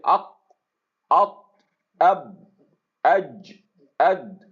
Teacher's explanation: ان تمام حروف کو جب آپ ادا کریں گے تو اپنے تھروٹ کے اینڈ پہ اگر آپ نوٹ کریں تو آپ کو ادھر دباؤ محسوس ہوگا. تو اس دباؤ کو ریموو کرنے کے لیے عرب نے کیا کیا کہ اس کے اندر اس چیز کو قلقلہ کے اندر قلقلہ انٹروڈیوس کیا گیا. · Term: مجہورہ